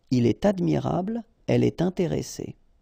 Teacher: you should make the liaison, and in that case it's with t